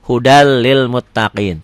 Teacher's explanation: Dibacanya N-nya hilang. N kalau dilatenkan jadi hudal, jadi double L. Hudal lil muttaqin tanpa ditahan. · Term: idgham bila gunnah